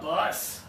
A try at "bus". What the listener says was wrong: You're kind of doing a boss. I want more pressure.